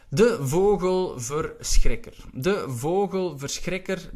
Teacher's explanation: Again, the CHR combination, which is quite difficult also for English speakers. The R, we roll that R in Dutch